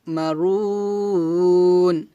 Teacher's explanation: মধ্যে আরজি তিন আলিফ টেনে পড়তে হয়